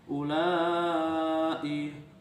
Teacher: mad wajib muttasil karena ada huruf mad bertemu hamzah dalam satu kalimat, panjangnya 2,5 alif atau 5 harokat